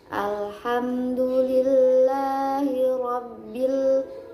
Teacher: Kemudian ada lam jalalah yang dibaca dengan tarkik karena ada lam jalalah yang sebelum lam jalalahnya itu ada harokat kasroh, maka dibacanya dengan tarkik, yaitu Alhamdulillahi. Kemudian ada huruf ro yang dibaca tebal atau tafkhim karena huruf ro-nya itu berharokat fathah